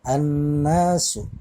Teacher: alif lamnya hilang, ya, langsung melebur ke huruf nun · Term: alif lam syamsiyah